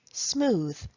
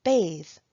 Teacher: the voiced th sound at the end of words in the final position